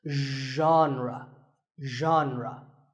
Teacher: Pay attention to the first sound. It's like sh, but you have to put your voice into it. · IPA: /’zhän-rə/